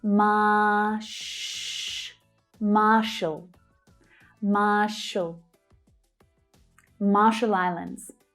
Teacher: So 'Mar' is the stressed syllable and then you're adding the /ʃ/ consonant sound.